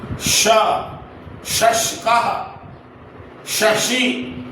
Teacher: यह जो श है जिसे हम तालव्य श कहते हैं, यानी इसके उच्चारण में तालु से जिह्वा स्पर्श करती है और मुंह से हवा अधिक निकलती है।